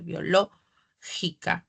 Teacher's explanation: Ah biológica Perdón dice biológica pero sí tengo el fonema K la c se oye como una K como una velar